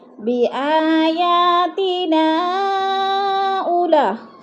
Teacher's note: مد منفصل 4 الفی مد ہے، 4 الف کے برابر ہم نے اس کو کھینچ کر پڑھنا ہے